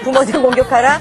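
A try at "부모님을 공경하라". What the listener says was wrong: 발음이 내 부모를 공격하라 이렇게 들리는 것 같아요.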